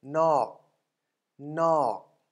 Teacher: dead long syllable, and no tone mark, therefore resulting in a falling tone.